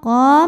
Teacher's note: karena qaf barisnya fathah panjang, maka qaf panjang 2 harokat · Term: mad tabi'i muqaddar